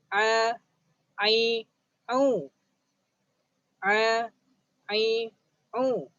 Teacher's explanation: a, ai, au pun sama juga keluar di bahagian tengah halqum.